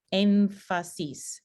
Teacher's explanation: está consonante y así cambiamos el punto de articulación de nada en lugar de ser alveolar lo vamos a pronunciar labio dental